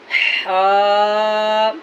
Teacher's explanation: हा का जो मखरज है वो वस्ते हलक, वस्ते हलक यानी हलक का दरमियानी हिस्सा